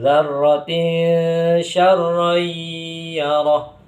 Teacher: Lafaz syar yarar itu dinamakan bacaan idgham bighunah. Karena tanwan bertemu dengan huruf ya yang mana disertai dengan ghunah atau dengungan. Jadi agak dilamakan.